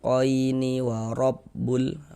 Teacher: Huruf ro memiliki tanda baca fathah. Maka ini huruf ro dibaca tabkhim. Nah, dibaca tebal. · maka huruf ya sukunnya adalah huruf lin, harful lin. Maka kita baca lunak, lembut. Qaini wa rabbul.